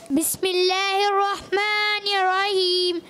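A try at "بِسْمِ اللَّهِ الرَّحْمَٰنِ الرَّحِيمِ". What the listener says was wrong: رحیم میں ہا ادا کریں.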